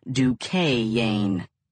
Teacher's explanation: The way rolled it out, you would have thought the word had an extra syllable.